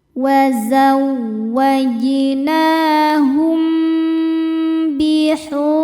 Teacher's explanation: Selanjutnya ada hukum ikhfa syafawi karena mim sukun menghadapi huruf ba. Cara bacanya mim sukun didengungkan tahan